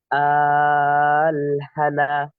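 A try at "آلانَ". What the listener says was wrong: হা না কেন হচ্ছে? হা কোথা থেকে আসলো ভাই? আল, চার আলিফ টানার পরে আনা। আনা, হ্যাঁ, আল, আনা।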